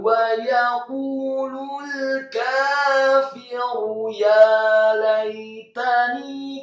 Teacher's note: Wa yaqulul kafiru, kata kafiru, kafnya dibaca tipis fathah 2 harokat, kemudian fa-nya dibaca tipis kasrah 1 harokat, kemudian rohnya dibaca tafkhim, tebal atau tafkhim, marfu atau dhammah tanwin satu harokat